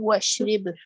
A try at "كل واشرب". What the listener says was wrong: كل واشرب. This one is very confusing, and sometimes after completing 3 books, we will still keep on saying ishrib. So it is كل واشرب.